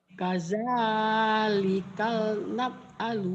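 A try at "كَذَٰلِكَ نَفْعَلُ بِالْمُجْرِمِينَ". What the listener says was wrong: Jangan kadzalikal nggak ada lam. Kadzalika naf. Kadzalika naf. Kadzalika naf'alu bil mujrimin.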